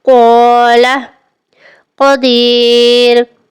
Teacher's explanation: قاف زبان کی جڑ اور تالو کے نرم حصے سے ادا ہوتا ہے